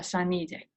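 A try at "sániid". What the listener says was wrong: Saanite, you should put the stress on saanite more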